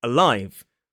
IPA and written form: əˈlaɪv (alive)